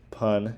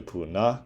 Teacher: So as denoted further on, so like the word pun in English is transcribed into puna, in which there's an epenthesis of the final vowel to fit the syllabic structure. Basically, you have to add the A at the end of pun in order for it to fit.